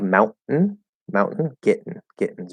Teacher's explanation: instead of doing a flapped d um we're actually gonna do a stop t um a glottal stop t